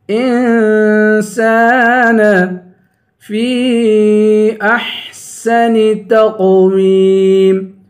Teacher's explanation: فی پہ مد ہے، اس مد کو تین الف کی مقدار کھینچ کے پڑھیں گے